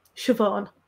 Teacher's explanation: you hear irish speakers pronounce it more with an emphasis on the first syllable siobhan i suppose it depends again on dialect so yeah i